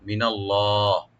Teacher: নুনটাকে open করে লফজ জালাল এখানে আমরা ডিপ করে পড়ব